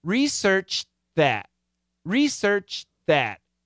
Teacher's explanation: that and then slide the tongue down to the th so you stop here for the t right research and then you gotta slide the tongue down to get the th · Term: stop sound